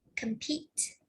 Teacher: So compete is a verb, and the stress is on the second syllable